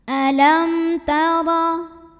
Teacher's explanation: Huruf ra dibunyikan secara tafkhim sebab ra-nya berbaris di atas barisnya fathah. Maka cara bacanya tebal. Pangkal lidah kita angkat ya, cara menebalkannya.